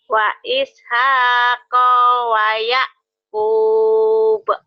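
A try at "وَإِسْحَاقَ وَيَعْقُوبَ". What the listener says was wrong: Koknya pendek. Wa ishaqa wa yaqub. Ayo lagi. Wa ishaqa wa yaqub. Wa ishaqa wa yaqub.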